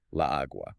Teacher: If you say la agua, you get this double A sound right in the middle.